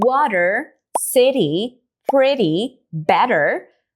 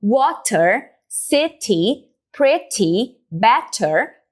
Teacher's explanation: Isso é uma mudança no som do T e também, às vezes, no som do D no inglês norte-americano, em que em vez de pronunciar um T com essa explosão forte de ar, tá, o falante vai simplesmente dar uma batida na língua atrás dos dentes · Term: flap T